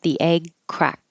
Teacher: my tongue goes to the DT position but I don't release the airf flow